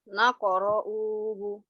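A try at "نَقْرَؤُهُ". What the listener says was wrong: U-nya satu harokat. Coba.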